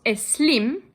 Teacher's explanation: philanthropist named Carlos es slim his name is spelled s-l-i-m but everyone will pronounce it with an e in front